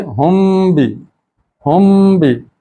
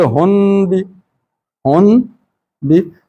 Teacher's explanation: اب پڑھیں گے ہم بھی، ہم بھی، ہونا تو یہی چاہیے ہن بھی، ہن بھی، نون کے لیے جہاں آواز زبان لگتی ہے وہاں لگنی چاہیے تھی، ہن بھی تو نہیں لگتی، یہاں پر ہم بھی یعنی سینے سے ڈائریکٹ ہونٹوں پہ آواز آ جاتی ہے، زبان اس میں استعمال نہیں ہوتی، ہم بھی۔ نون میں زبان استعمال ہوتی ہے باقی جگہ پہ، لیکن یہاں پہ زبان استعمال نہیں ہوگی، ہم بھی، پڑھیے ذرا، ہم بھی، اور اگر تنوین کی بجائے نون ساکن لفظوں میں آ جائے تو اس کو کیا پڑھیں گے؟